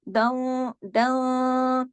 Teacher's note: थोड़ा सा इख्फा हो रहा है तो थोड़ी सी आवाज नाक में जा रही, थोड़ी सी बाहर